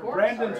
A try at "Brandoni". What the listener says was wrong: Brandoni pepperoni. Brandon with an I.